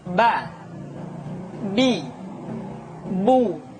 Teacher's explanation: akan tetapi anamta tidak anamta tapi Anta yang kedua huruf ba huruf ba dikeluarkan dengan cara merapatkan kedua bibir kita